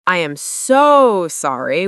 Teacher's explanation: with a long, dragged-out so, it can sound fake